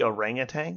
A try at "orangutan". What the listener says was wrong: There's no there's no G in it.